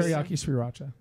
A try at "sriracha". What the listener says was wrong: It's sriracha. Well, you said you said Sriracha like like Sri Lanka.